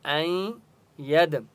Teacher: گے حمزہ یا زبر این ید دال کے اوپر سکون ہے اس لیے یا کو دال کے ساتھ ملائیں گے اور دال کے اوپر قلقلہ ہوگا